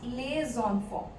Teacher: because we have to do liaison here, we will pronounce les enfants. Otherwise, we pronounce only les.